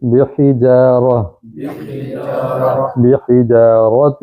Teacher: ہا کو حلق سے ادا کریں گے